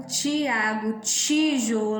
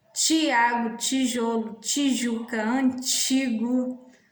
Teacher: a gente fala ti, né, não é linguodental, é palatal